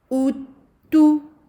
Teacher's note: deux dhammah et en plein milieu, on revient avec les lèvres à la normale